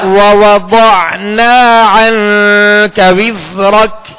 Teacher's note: زا کو سیٹی کی آواز میں پڑھیں گے